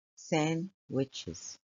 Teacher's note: And if you notice that the D is written in red, it's a silent letter. We don't pronounce the D when we say sandwiches.